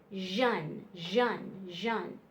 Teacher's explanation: it's a little bit stronger it says Jun like a z h instead of an sh